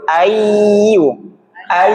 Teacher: Bukan ayun tapi ditekan dimasukkan ke hidung. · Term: dengung